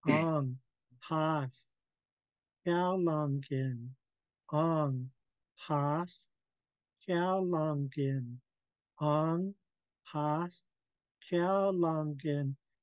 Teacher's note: blowing lots of air from the back of the throat